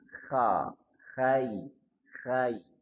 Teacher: Kha tenggorokan bagian atas.